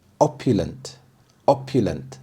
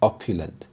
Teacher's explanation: The stress is on the first syllable, opulent.